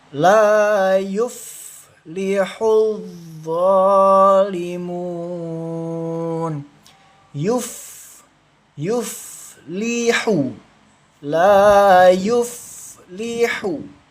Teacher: fa sukun dialirkan jangan dipantulkan. Kalau dipantulkan salah. itu termasuk bacaan qalqalah.